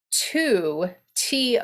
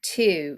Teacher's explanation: in general american is a pure sound in irish it's a diphthong two it's actually a triphthong two two so you've got different